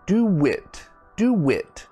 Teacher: we add like a w sound · so you see my mouth is actually making a w sound